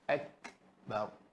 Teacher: Kaf kena keluar angin kan? Akbar.